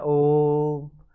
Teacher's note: जो तीन मात्रा का समय लगे किसकी अपेक्षा अपने है जो ह्रस्व स्वर की अपेक्षा तिगुना समय लगे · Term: प्लुत स्वर